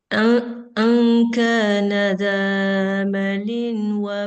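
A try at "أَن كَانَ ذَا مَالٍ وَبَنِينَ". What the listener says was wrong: Zamaliu, jangan lin. Liu karena ada waw setelah tanwin. Jadi dia hilang suara tanwinnya, yang tinggal hanya suara wawnya. Maliu wa banin.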